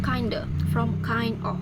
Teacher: The reason is the d in kind of blends with the vowel in of. The 2 sound merge and become kinda. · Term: assimilation